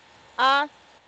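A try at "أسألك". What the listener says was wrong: Askalahu. We don't elongate it. You are feeling it like this, but it is short. Askalahu.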